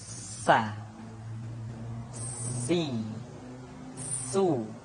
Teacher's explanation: Di antara sifat yang menonjol ketika kita mengucapkan huruf sa atau huruf sin adalah sifat as-safir. Di mana ketika kita mengucapkan huruf sa, ada suara tambahan yang menyerupai dengan suara belalang.